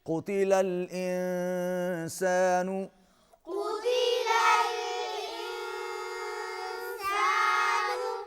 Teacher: قاف کو موٹا پڑھیے، انسان یہاں پر اخفا ہوگا۔